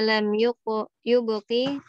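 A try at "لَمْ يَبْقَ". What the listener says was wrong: lam yabqa, bukan lam yubqi. Ada baca lam yubqi. Lam yabqa.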